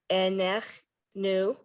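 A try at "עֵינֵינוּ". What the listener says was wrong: There's no chet. Where do you see a chet? A, ne, a, ne, nu.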